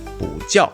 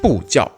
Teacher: In Mandarin Chinese, this character has two readings depending on if the following character has a fourth tone, that is the falling tone, or not. If the next character has a falling tone, 不 will instead be read as 不, that is in the second or rising tone.